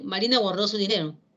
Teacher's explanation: la entonación final va a ser descendente